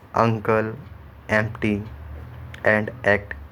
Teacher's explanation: a forceful articulation of word initial vowel as uncle, empty and act. आप इन तीनों ही word को बोलेंगे तो आपको लगेगा, तो आप समझ पाएंगे कि कैसे ये बनते अचानक से साउंड बहुत तेज़ी से आई। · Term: ग्लोटल स्टॉप